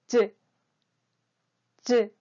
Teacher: 혀 중단 부분이 이 천장에 붙었다가 떨어지며 나는 소리입니다